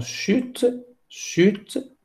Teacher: ça commence par le son che et se termine par une consonne, donc te · le schwa en fin de mot n'est pas prononcé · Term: syllabe, E muet